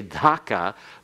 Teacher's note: the D for Dhaka is a D that goes along the alveolar ridge, that ridge right behind your teeth. Before you get to the soft palate, your tongue goes there. · Before you get to the soft palate, your tongue goes there. And then it's supposed to be aspirated as though they're an H together with it, so that if you have a candle in front of your face and you say Dhaka, the flame should waver.